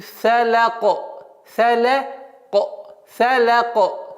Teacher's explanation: Каф переходит в сукун. И каф является звуком калькаля, взрывным звуком.